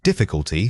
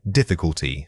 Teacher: Difficulty stressing the second syllable.